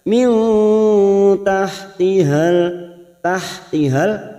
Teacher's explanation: Nun sukun bertemu ta ikhfa hakiki, kita samarkan bunyi nun sukun 3 harokat.